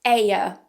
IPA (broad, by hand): eɪə